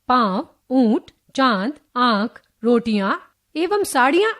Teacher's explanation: अनुनासिक के उच्चारण में हवा नाक और मुंह दोनों से बाहर निकलती है।